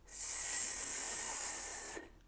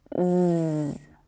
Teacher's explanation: they have the same tongue and mouth position but one uses air to make the sound It's unvoiced s s and the other uses your vocal chords it's voiced